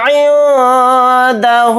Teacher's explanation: نون کی آواز کو ناک میں چھپا کر اخفا کے ساتھ پڑھیں گے، دال کو جلدی پڑھیں گے۔